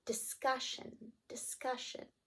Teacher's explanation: hopefully you thought cuss should have that syllable stress